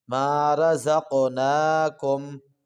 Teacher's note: جی طیبات ما رزقناکم، یہاں پہ ما رزق قاف کو موٹا بھی کریں گے، زا کو سختی کے ساتھ پڑھیں گے، را کو موٹا کریں گے، قاف پر قلقلہ بھی کریں گے